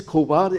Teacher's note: So in this sense, it's not Ko, it says Khowar, and it's unaspirated. It's simply K and wow.